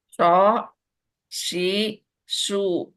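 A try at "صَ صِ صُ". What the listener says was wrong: Nah, bagian yang ketika dia posisinya kasroh, sli itu, sli dibikin tebal. Jadi bukan si ya, bukan seperti sin.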